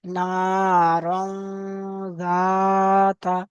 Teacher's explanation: তানবিনের আওয়াজকে নাকে তুলে একালি পরিমাণ গুণনা করে পড়তে হবে, একে ইকফা বলে।